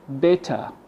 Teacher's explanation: So the ER replaced with a schwa sound. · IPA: ə